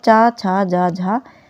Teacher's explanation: च छ ज झा ये जो है तालव्य व्यंजन कहलाते हैं